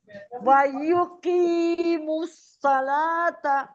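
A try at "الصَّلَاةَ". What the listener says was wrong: سلا نہیں، صوت کو موٹا پڑھیں، صلاتا، لام کو موٹا نہ کریں، صلاتا،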